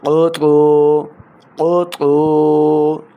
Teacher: قاف حروف مستعلیہ سے ہے، موٹی آواز کے ساتھ اس کو پڑھنا ہے. قطو، قطو، قا واو پیش تو، تو بھی حروف مستعلیہ سے ہیں.